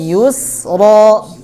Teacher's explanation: Yang monyong itu nya karena dhamma. Kalau sa-nya nggak usah monyong, tarik ke belakang ya.